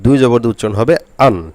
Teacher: হামজা জবর আ, হরকতে পড়েছিলাম হামজা জবর আ, আর 2 জবর দিয়ে উচ্চারণ হবে আন। শেষে শুধু নুন লাগাইতে হবে, অর্থাৎ দন্তান্ন লাগাইতে হবে, শেষে নুন লাগাইতে হবে।